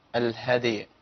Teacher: محتاج ان ابين الياء قلقله الدال ما تاثرش على الياء